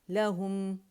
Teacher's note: میم کے بعد جو غنہ ہے اس کو ناک میں فیل کریں